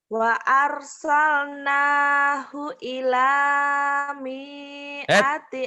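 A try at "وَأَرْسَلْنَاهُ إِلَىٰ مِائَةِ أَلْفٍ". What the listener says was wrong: Salah. Salah. Mi-nya pendek. Miati itu karena nggak pasangan ya. Karena nggak pasangan, pendek.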